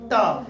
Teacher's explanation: ट के उच्चारण में देखिएगा तो जीभ आपका पहले ऊपर जाएगा और ऊपर जाके झटके के साथ नीचे आएगा। तो ऊपर जहां पे जाके स्पर्श कर रहा है ना वही आपका स्थान है मूर्धा का।